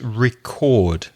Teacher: So a record, a vinyl record, stress the first syllable, but the verb to record music, stress the second syllable.